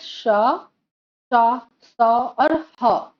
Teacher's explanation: देखो बच्चों, उष्म व्यंजन क्या है, जैसे हम यहाँ देखेंगे उदाहरण दी गई है श, स, स और ह। देखो, जब इन अक्षरों का उच्चारण होती है तब तब अनुभव करोगे कि जब हम उच्चारण करते हैं तब धीरे से, धीमी गति से गर्म हवा मुख से निकलती है। गर्म हवा वो एक संघर्ष से निकलती है, तभी इन अक्षरों का उच्चारण करना सही तरीके से संपादन हो सकती है।